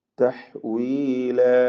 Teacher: തഹ്വീല, ഹാഇന്റെ ഉച്ചാരണം പ്രത്യേകം ശ്രദ്ധിക്കുക. വഖഫ് ചെയ്യുമ്പോൾ അലിഫിന് 2 ഖദറിൽ കൂടുതൽ ദീർഘം വരരുത് എന്നത് പ്രത്യേകം ശ്രദ്ധിക്കേണ്ടതാണ്. 2 ഹറക്കത്തിന്റെ അളവിൽ മാത്രമാണ് ദീർഘിപ്പിക്കേണ്ടത് എന്നർത്ഥം. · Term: മദ്ദഇവാദ്